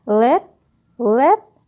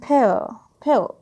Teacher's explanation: this clear variant l and the dark variant l they both are the allophones of phoneme l